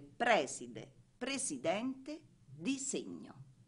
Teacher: Eccezioni diventa aspra nelle parole preside, presidente, disegno